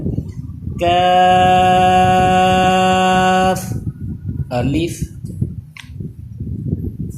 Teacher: یہ زبان کی جڑ اور تالو کے سخت حصے سے ادا ہوتا ہے